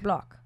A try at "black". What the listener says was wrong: With an extra A. You have to picture Hermione Granger's accent.